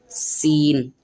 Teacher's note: सीन में दोनों दांत मिलते हैं और जब जाके इसकी आवाज आती है सीन। सीन में शीटी निकलती है।